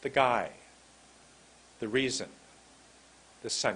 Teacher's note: We make it a contraction. It's a TH apostrophe only, no a sound.